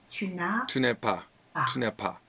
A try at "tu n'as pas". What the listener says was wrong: Tu n'as, c'est un A. Tu n'as pas.